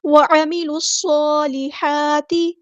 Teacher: صاد اور ہا کو برابر لمبا کرنا ہے کیونکہ دونوں پہ مد اصلی ہو رہی ہے، اور ہا کو وسط حرکت میڈل تھروٹ سے ادا کرنا ہے تاکہ زیر کو باریک ادا کرنا ہے اور لمبا نہیں کرنا.